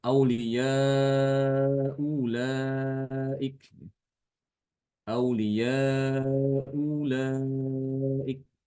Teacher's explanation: Atau ibdal. Yang wajah kedua dari Imam Kumbul ibdal mengganti hamzah kedua dengan huruf mad